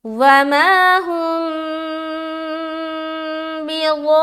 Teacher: तो मद की 3 किस्में हैं, मद्दे मुत्तसिल, मद्दे मुनफसिल और मद्दे लाजिम, ये है मद्दे लाजिम। तो 3 से 4 अलिफ खींचेंगे और खींचते हुए रा में मिलाएंगे